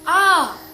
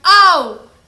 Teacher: the word ah is spoken as a monophthong, while the word ow is spoken as a diphthong. Diphthong use two vowel sounds in one syllable to make speech sounds.